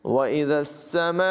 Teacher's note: यहाँ पर मद मुत्तसिल है, इसे 2-2.5-3 अलिफ तक तकरीबन 2-2.5 सेकंड तक इसको लंबा करके पढ़ेंगे